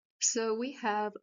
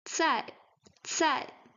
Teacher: some air is going out from our mouth when pronouncing cai